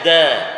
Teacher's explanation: hujung lidah kita tu letak dekat pengikat gigi atas kan gusi kita tu